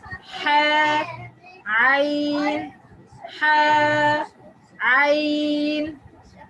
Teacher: Ha and ayn comes from the middle of the halq, the throat, the middle of the throat, or وسط الحلق.